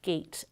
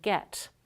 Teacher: They're both mid-front unrounded vowels, but a is tense. It's made with greater tension in the muscles of the vocal tract than e.